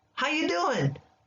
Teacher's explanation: we drop the G and we make the U a ya.